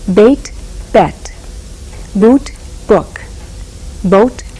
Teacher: the vowel sound in the first word of each pair is tense as in beat in the second LAX as in bit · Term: tense lack vowels